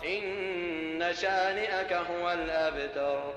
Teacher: long vowel alif is prolonged, but it's not 2 seconds. It's maybe 1 second at most. And here the short vowel fatha is less than 1 second, perhaps 0.5 seconds.